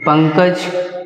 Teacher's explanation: अनुस्वार में नाक से कम हवा निकलती है नाक से नाक से कम हवा निकलती है पंकज हलचल इन